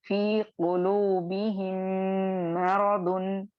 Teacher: इदगाम शफवी हो रहा है, और मीम को आप चूंकि मीम साकिन को मीम मुतहर्रिक में या मीम मुशद्दद में मर्ज करेंगे, तो आपको 2 काउंट्स का गुन्ना करना है।